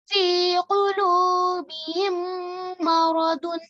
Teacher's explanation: The second Mim Mushaddad produces a strong Gunna, 2 seconds. 2 counts. Okay. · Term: Idgham Shafawi